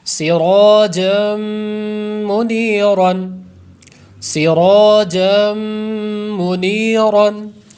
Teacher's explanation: را پر زبر ہے، را کو ہم پر کریں گے، آگے پھر ادغام یرملون کا غنہ کریں گے